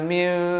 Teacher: tukarkan daripada bunyi nun kepada bunyi mim, dua harakat